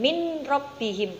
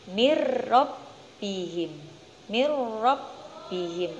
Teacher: nun sukun bertemu dengan roh cara membacanya yaitu dimasukkan munculnya bukan min rabbihim bukan seperti itu tapi ni robbihim mirrobbihim